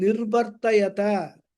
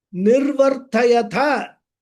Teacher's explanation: If we give emphasis on the last ta and make it sound like tha, the whole meaning will change. · All difference is ta alpaprana and tha mahaprana.